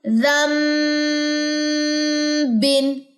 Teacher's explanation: بن، زال میم زبر زم میں نے پڑھا، نون یہاں پہ پڑھا نہیں جائے گا، صرف لکھا ہوا نظر آئے گا